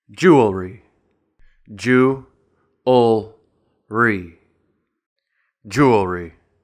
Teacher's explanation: this is a 3-syllable word with the stress on the first syllable.